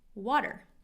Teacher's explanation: this T is a flap T in water sounds like a D